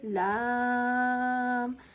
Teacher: لام پہ مد ہونے کی وجہ سے 3 الف یعنی 3 سیکنڈ تک لمبا کھینچیں گے